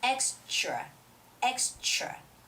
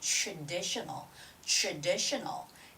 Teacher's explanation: When there is T and the R together, it's always the ch sound.